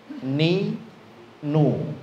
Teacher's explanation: Jadi ujung lidahnya nggak nempel ke gigi seri atas, dia di belakang gigi seri atas. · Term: huruf nun